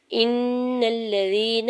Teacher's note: حمزہ کے زیر کو نون مشدد کے ساتھ ملاتے ہوئے نون مشدد پہ گنا کرنا ہے